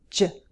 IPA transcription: dʒ